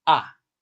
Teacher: The pitch is falling sharply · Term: fourth tone